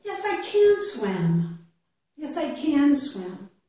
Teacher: So, again, I would emphasize can.